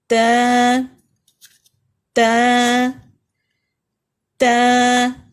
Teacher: زبان کی نوک اوپر کے 2 دانتوں کے اندر والے حصے جڑ سے لگے گی